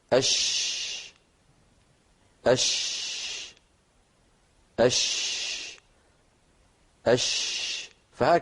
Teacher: ولاحظوا بان الصوت اولا مكان نشوءه هو وسط اللسان · التفشي هو انتشاره صوت الشينه من مخرجه حتى يصطدم بالصفحه الداخليه للاسنان العليا والسفلى